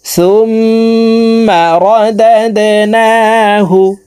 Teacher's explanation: নাকের বাসি থেকে 3 সেকেন্ড পরিমাণ গুন্নাহ করে ধরে রাখবো।